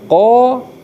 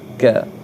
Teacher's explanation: Jadi nah, qa lebih lho daripada ka. Qaf ya lebih dalam daripada kaf.